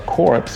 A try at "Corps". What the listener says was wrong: Did you say corpse? It's core. That's how you pronounce it. Corpse.